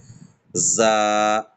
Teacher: জাটাকে একটু ঝাঁঝালো করে জিভের আগালেই, আগালের থেকে একটু ভিতর দিয়ে সাইড থেকে